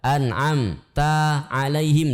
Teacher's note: anamta tidak boleh dipantulkan ta tidak boleh dijeda